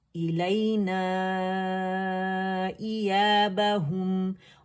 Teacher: हु के लिए आपने क्या करना है, लिप्स को रोल करना है और मीम पे जब आएंगे अनरोल हो जाएंगे। तो जब खुश्क से आपस में मिलेंगे मीम के लिए तो इसमें जो तवस्सुत है पार्शियल फ्लो आवाज़ का वो आपको सुनाई देना चाहिए, ठीक है, यानी पूरा मीम पे जाना है।